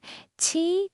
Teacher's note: It's an aspirated sound made with the tip of your tongue pressed against the back of your bottom teeth. You push out a puff of air. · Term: Q sound in Mandarin